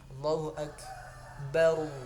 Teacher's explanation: ru-nya ru tebal, ra tebal ya. Tafkhim, tidak boleh kita tipiskan ya. Atau kita matikan.